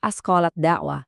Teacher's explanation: Lidah kamu dengan pintarnya melompati huruf ta dan langsung menebalkan bunyi dalnya.